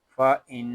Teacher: یہاں نون شدد ہے اور نون شدد میں ہمیشہ گننا ہوتا ہے. اس کو فا ان اس طرح نہیں پڑھیں گے، اس کو پڑھیں گے فا ان.